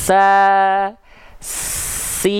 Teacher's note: makanya sin ketika dilafalkan kan deras. Nafasnya deras suaranya. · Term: mengalir nafas